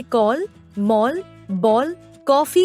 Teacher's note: इसे अर्धचंद्र कहते हैं। यह आ ओ के बीच की ध्वनि है